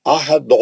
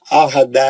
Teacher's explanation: دال مستعلیہ کا نہیں ہے، دال پتلا پڑ جاتا ہے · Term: پتلا دال